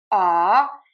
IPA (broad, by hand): kɔz